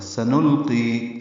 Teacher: سین کو جلدی پڑھنا ہے، صفیر کی آواز سے پتلی، لام ساکن پہ اظہار، قاف پرقی، یا مدہ.